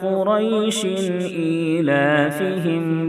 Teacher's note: اظہار حلقی میں غنہ نہیں کریں گے بلکہ شین کی تنوین کو ظاہر کر کے فوراً آگے بڑھ جائیں گے